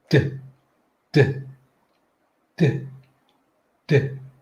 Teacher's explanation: my tongue is pushed right up into the corner between my front upper teeth and my gums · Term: D sound